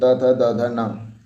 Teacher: दंत से जो होता है वो त वर्ण होते हैं